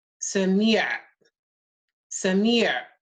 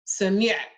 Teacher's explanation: it almost sounds like a glottal stop